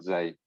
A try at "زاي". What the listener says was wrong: So both of you, we want zai, not zay. Zay is another word for like clothing in Arabic. Zay. zai. We want zai.